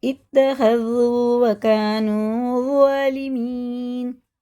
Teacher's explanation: زال باریک ہوتا ہے، زبان کی نوک اوپر کے دانتوں کے کناروں سے لگا کے تب پڑھا جاتا ہے. سامنے والا جو اگر ہمارے پاس کوئی بیٹھا ہے تو اس کو ہماری زبان کی نوک نظر آئے گی.